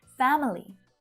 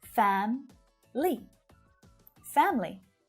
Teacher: native speakers will reduce it down to just 2 syllables because it's more efficient